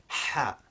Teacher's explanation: So it's not the equivalent of our English H as in hello or hi. It's a much sharper sound with the throat constricting and the air rushing out much quicker.